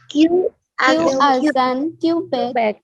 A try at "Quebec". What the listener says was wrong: Quebec को नहीं लंबा करना. Quebec. Okay. फर्स्ट सिलेबल को लंबा करेंगे.